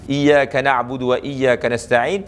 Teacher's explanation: tidak satupun huruf yang dibaca dengan tebal